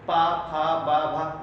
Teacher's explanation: कैसे बोल के देखो, पा फा बा भा, ओठ पकड़ बोलो, प प नहीं बोल पाओ, क्योंकि इनका उच्चारण स्थान ओठ से मिलने से ही होता है